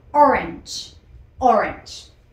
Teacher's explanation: hacemos un cambio de vocal de la a por la e y la terminación sería como una ch